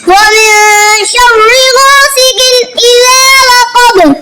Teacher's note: من پہ اخفا کریں گے، یعنی آواز کو ناک میں چھپا کر پڑھیں گے